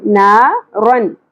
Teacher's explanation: तनवीन के बाद हरूफ हलकी में से हा आ गया तो यहाँ पर इजहार करेंगे, ना रन, रन इस तरह करके इख्वा करके नहीं पढ़ना हमने, ना रन।